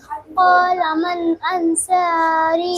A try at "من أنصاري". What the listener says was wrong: सौद को मोटा करो।